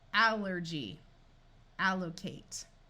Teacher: we use a short A sound for a word beginning with ALL rather than a schwa.